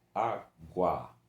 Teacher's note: O A, um ditongo ó, crescente, começa com uma vogal fraca, U, e depois vai para uma vogal mais forte, o A